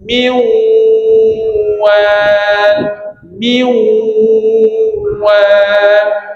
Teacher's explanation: Bila kata maal ghunah ni kita panjangkan min wal min wal. Lepas kita idgham, kita panjangkan untuk gun ghunnah, untuk dengung dia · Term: idgham maal ghunnah, idgham ma'al gunnah